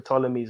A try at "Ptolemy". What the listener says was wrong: Why do you pronounce the P? It's Ptolemy. The silent P.